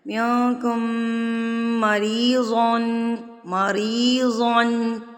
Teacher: را کے نیچے زیر ہے تو را زیر کی صورت میں باریک پڑی جاتی ہے، اور اس کے آگے یا مدہ آ گیا ہے، اس لیے ہم نے را کو کھینچ کے پڑھا ہے۔